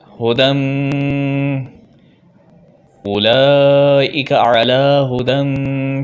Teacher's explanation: ہا کو سینے سے، اس والے ہا کو ہم سینے سے ادا کرتے ہیں ہو، اور دال کو میم سے ملائیں گے کیونکہ میم کے اوپر تجدید ہے تو اس پر غنہ بھی کریں گے